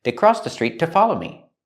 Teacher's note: To is pronounced t. It's not stressed. Link the words, street to.